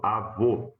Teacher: última sílaba, ela é a tônica terminada em O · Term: O fechado